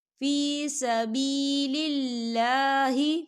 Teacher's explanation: اللہ کا نام جو ہے باریک پڑھا جائے گا کیونکہ اللہ کے نام سے پہلے زیر ہے تو ہم اسے باریک پڑھیں گے۔